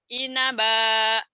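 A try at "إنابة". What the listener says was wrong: Jangan ditahan. Inaba itu namanya mad iwad. Dua fathah dibaca satu jika dihentikan dan jadi panjang. Tapi karena kita lagi latihan satu ikro satu sampai ikro 4 itu dibaca apa adanya, berarti dibaca apa adanya. Inaban.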